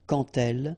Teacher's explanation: when you will have this D, you will phonetically pronounce it like T